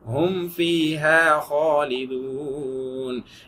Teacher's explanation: ஹும் ஃபீஹா ஹும் ஃபீஹான்னு மீமை சொல்லிட்டு ஃபாக்கு தனியா மேல் பல்ல கீழ் உதட்டல செப்பரேட்டா மஹ்ரஜை நீங்க வச்சு டச் பண்ணி ப்ராப்பரா படிங்க.